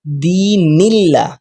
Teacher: اللہ کی لام سے پہلے والے حرف پر اگر زیر ہو جائے تو ہم نے باریک پڑھنی ہے لام کو، صرف اللہ کی لام کو، باقی لام تو سمپل ہی پڑھیں گے.